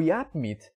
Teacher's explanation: ele tem uma plosiva que é o P, mais nasal no mesmo local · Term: Plosiva mais nasal